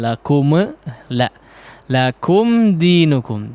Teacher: huruf mimnya jangan dipantulkan ya, yang disukuni